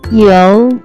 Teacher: First character is yo pronounce with second tone.